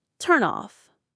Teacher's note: We link them. The N joins the beginning of off. It sounds like turn off. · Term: linking